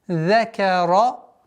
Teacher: Каф мягкая. Ра твердая.